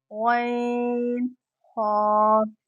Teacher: غین اور خا کا مخرج ایک ہے، یہ حلق کے درمیانی حصے سے ادا ہوتے ہیں